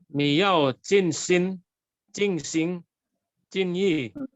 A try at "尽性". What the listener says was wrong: Singnya sing. Harus nada. Jadi mungkin terpengaruh dengan singko lah itu singnya.